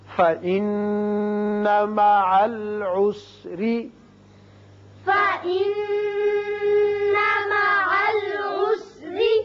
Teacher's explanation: نون مشدد ہے، غنہ کریں گے اور یہاں را کے نیچے زیر ہے، را باریک پڑا جائے گا